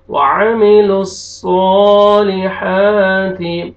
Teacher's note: लाम को हमने डायरेक्ट सौद शद्दा के साथ और सौद को मोटा करके पढ़ना है और खींचना है